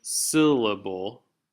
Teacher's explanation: I'm emphasizing sill quite a bit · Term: stress